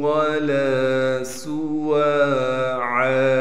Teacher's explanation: لام کو الف مدہ سے ملائیں گے اور لام کو ایک الف کے مقدار کھینچیں گے، سین میں سیٹی ادا کریں گے